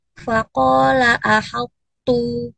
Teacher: untuk huruf to-nya tidak terbaca kolkolah langsung ke huruf ta-nya. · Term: idgham tidak sempurna